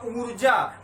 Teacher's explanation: मतलब हमने ऊ के ऊपर ह्रस्व से ज्यादा टाइम दिया, मतलब एक मात्रिक स्वर जो था उससे हमने ज्यादा समय दिया, मतलब थोड़ी टाइम तक हमने उस पर जोर दिया।